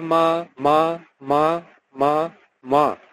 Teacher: অমিয় মানে ও, অ এর জায়গায় আমরা বাঙালিরা ও উচ্চারণ করি